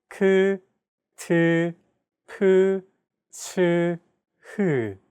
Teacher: Aspirated consonant sounds, on the other hand, have an added turbulent sound.